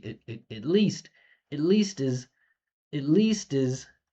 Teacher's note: it and is are small reductions. So least stands out